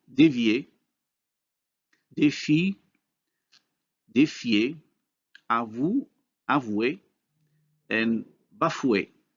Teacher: Notice how the high vowels changes into the corresponding glide with the same features for backness and rounding.